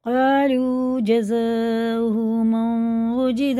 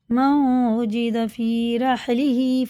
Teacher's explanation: نون ساکن کے بعد واو آ رہا ہے، اس پہ شد ہے تو یہ غنہ کر کے پڑھیں گے۔ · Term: ادغام واو